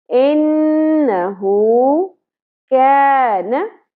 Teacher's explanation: काफ को हम बारीक अदा करेंगे, न जबर शॉर्ट रखी जाएगी।